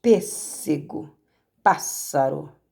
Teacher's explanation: E proparoxítona é a antepenúltima que é mais forte.